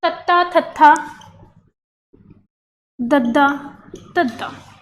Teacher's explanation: ਦੰਤੀ ਵਿਅੰਜਨ ਉਹ ਵਿਅੰਜਨ ਹੁੰਦੇ ਨੇ ਜਿਨ੍ਹਾਂ ਨੂੰ ਉਚਾਰਦੇ ਸਮੇਂ ਦੰਦਾਂ ਨਾਲ ਜੀਭ ਟੱਚ ਕਰਦੀ ਹੈ,